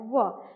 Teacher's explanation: मेरा ऊपर वाला दांत है वो नीचे वाले ओष्ठ में थोड़ा सा टच होता है व। न तो वह पूरा पूरा दांत से उच्चारण हुआ और न तो पूरा पूरा ओष्ठ से उच्चारण हुआ।